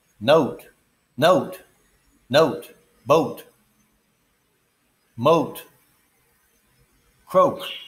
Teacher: note is ah followed by ooh